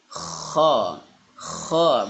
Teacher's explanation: dia memiliki sifat tebal dan makhrajnya makhrajnya berada di ujung tenggorokan atau bagian atas tenggorokan dekat lidah ya. Biasa orang sebut itu ngorok gitu ya. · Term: huruf K